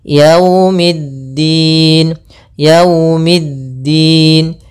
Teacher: pada lafal waw, hati-hati jangan terlalu dihentakkan, karena di sini bacaan lin, maka kita harus menyempurnakan daripada linnya, kelembutannya.